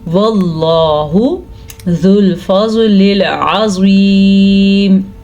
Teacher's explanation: زواد کو پر پڑھنا ہے، زواد ہمیشہ ہی پر پڑھا جاتا ہے، اور یہ واو بالکل بھی نہیں پڑھا جائے گا کیونکہ اس واو کے اوپر کوئی بھی حرکت نہیں ہے، ٹھیک ہے۔